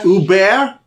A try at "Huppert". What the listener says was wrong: Yeah, you don't pronounce the H.